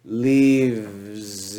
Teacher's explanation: we change the F, which is full of air, to the V, which has voice, and it's closer to the sound of the S.